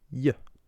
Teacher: Raising the tongue towards the pallet is exactly what you do in English when you make the sound Y.